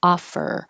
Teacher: when you finish, your tongue should be in the R position and you're holding it